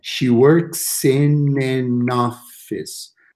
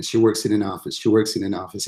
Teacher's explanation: it's very hard to say where one word ends in the next beginning